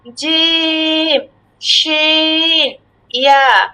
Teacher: জিহবার মধ্যখান হইতে তার বরাবর উপরে তালুর সঙ্গে লাগিয়ে উচ্চারিত হয়